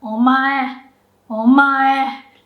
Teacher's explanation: It's gonna be low, and then after the second syllable, you go up and then stay high. So it'll be like low, high, high, high, high, high. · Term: heibangata